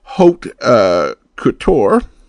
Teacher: the second word Haute is pronounced with the AU making a long o sone sound like in the phrase Haute Couture I haven't heard